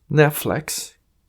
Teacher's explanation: el caso que sea la vocal I después de una consonante haremos sonar la vocal I como si fuese una e de una manera muy suave